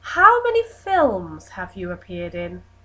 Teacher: Now there's that very first question with a strong fall. There isn't a rise at the end of the question.